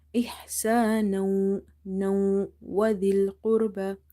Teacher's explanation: Zal is from the tip of the tongue.